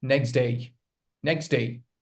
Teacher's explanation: the t or the d sound. It is dropped between two consonants. · Instead of saying next day, we say next day, next day. If you're speaking fast, you will drop the t sound. So when t and d come together, you pronounce only one sound. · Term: elision patterns